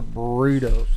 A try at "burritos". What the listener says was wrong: You got to roll the R. Burritos.